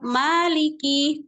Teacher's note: Ma di sini dibaca dengan mad dibaca dengan dua harakat